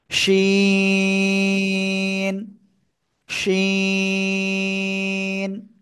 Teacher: শাহ শাহ শব্দ করে 3 আলিফটা নিয়ে আমরা এই অক্ষরটা উচ্চারণ করব